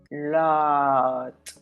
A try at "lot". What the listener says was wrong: So there was a little bit of rounding there, but Interestingly, law, which is spelled with an A, you pronounced it better, which tells me that again is your Spanish brain that when you see an O, it makes you round your lips.